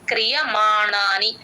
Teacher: క్రియ తర్వాత య క్లియర్ గా వినిపించాలి